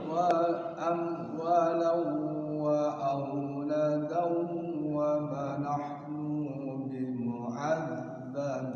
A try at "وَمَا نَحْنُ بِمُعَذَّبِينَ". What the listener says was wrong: Nu-nya pendek. Wa ma nahnu bimu'az langsung. bimu'azzabin.